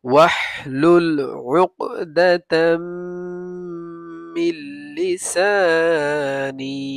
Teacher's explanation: মিল্লি সা, নুন ইয়াজের নি, মিল্লি সানি, ওয়াহলুল উকদাতাম মিন লিসানি। তানবিনের পরে মিম আসছে ইদগামে বা গুন্না, গুন্না হবে। আর নুন সাকিনের পরে লাম আসছে ইদগামে বেলা গুন্না, গুন্না হবে না, শুধু মিলিয়ে পড়বো।